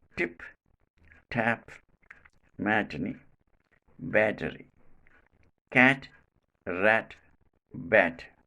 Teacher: Place of articulation, teeth ridge or alveolar ridge. Manner of articulation, plosive. quality voiceless. This sound is called alveolar voiceless plosive.